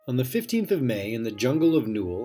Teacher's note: That's 2 unstressed syllables followed by 1 stressed, over and over.